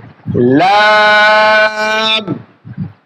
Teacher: সামনের উপরের 2 দাঁতের গোড়ার সঙ্গে লাগায় এই হরফটি উচ্চারণ করতে হবে